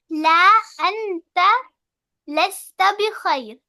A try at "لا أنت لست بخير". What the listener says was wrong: Well done.